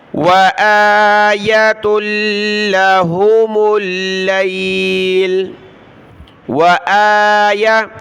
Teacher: حمزہ کو کھینچنا اوپر کیونکہ کھڑا زبر ہے، یا کو نہیں کھینچنا. واو زبر وا، حمزہ کھڑا زبر آ، یا زبر یا.